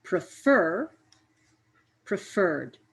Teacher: i put a little bit more energy or sound into the last part of prefer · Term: stress